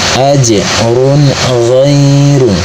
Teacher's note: Maka cara bacanya tanwin dhammahnya dibunyikan dengan jelas atau diizharkan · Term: izhar halki